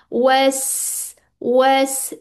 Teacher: वस सीन में क्या है? सफीर है। सिटी है।